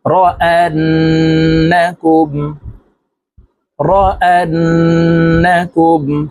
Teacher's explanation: নুনে মিমে তাসদিদ হইলে ওয়াজিব গুন্নাহ সর্ব অবস্থায় নাকের বাঁশি থেকে গুন্নাহ করিয়া পড়িতে হয়